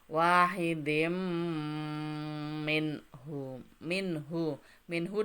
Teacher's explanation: Karena bertemu dengan ha. Nun mati bertemu dengan ha, maka dia dibaca idhar, dibaca dengan jelas.